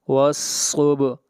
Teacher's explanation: با کے اوپر قلقلہ ہوگا، اس لیے کہ با حروف قلقلہ میں سے ہے